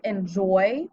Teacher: it doesn't make the o say its name it makes an oi sound